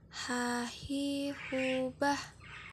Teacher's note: huruf H dikeluarkan dari tenggorokan yang terjauh